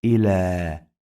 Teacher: We pronounce this ya like long vowel alif, not ya.